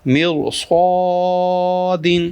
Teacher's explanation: را ساکن کے بعد حروف مستعلیہ میں سے صاد آیا ہوا ہے، اس کو موٹا پڑھیں گے